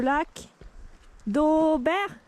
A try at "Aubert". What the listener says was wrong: Il y a un T à la fin. BERT.